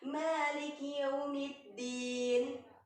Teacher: Waw sukun itu, nak, bacanya u, ya. Jadi bukan o.